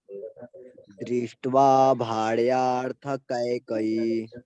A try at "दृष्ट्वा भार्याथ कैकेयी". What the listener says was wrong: भार्यार्थ कह रहे हैं आप और मैं कह रहा हूँ भार्याथ। भार्याथ देखो, भार या थ, भार्याथ भार्याथ भार्याथ